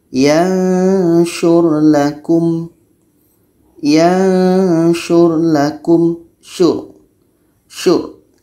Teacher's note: ada R mati sebelumnya baris depan Maka ini dibaca tebal